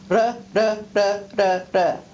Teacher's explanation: It's a retroflex position of the tongue where it hits the palate. So the basic movement is backwards and forwards. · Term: flap